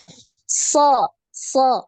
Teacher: pangkal, permukaan lidah juga naik. Kemudian jangan dibulatkan mulut bibir ya ketika pengucapan huruf so ini jangan dibulatkan, jangan dimonyong. Jangan so, tapi bibir ya, bibir ini tidak gerak.